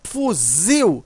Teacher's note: Quando você pronuncia fuzil, você observa que o zil, né, ele é mais forte. Veja, a sílaba tônica aqui é o zil.